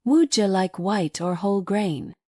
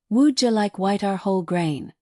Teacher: The linking happens between Wuja and like, but also between white and or which almost becomes white are. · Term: linking words naturally